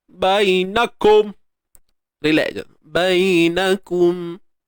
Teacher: Kemudian bainakum, nun baris atas na, kaf baris depan ku. Matikan mim dan disiplinkan bunyi dia. Tak mau bunyi kom.